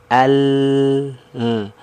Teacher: suara membelok karena huruf lam kalau kita lihat dari makhrajnya ya ujung lidahnya kan naik ke langit langit sehingga apa suara yang keluar itu menghalangi ya keluar dari depan akhirnya apa dia membelok dari sisi kiri dan kanan lidah Al ini suaranya terhalang nih keluar dari depan akhirnya dia keluarnya